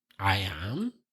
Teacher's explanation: the I am here is an affirmation but with a question rising intonation so the rising intonation I am is makes it a question